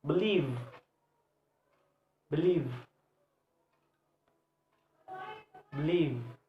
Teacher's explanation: verbs now or believe believe believe this work two syllables and the stress is the second syllable